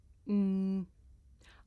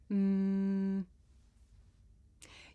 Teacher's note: I can even feel my nose vibrating.